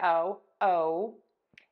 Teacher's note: the long o in English I call it the puckered o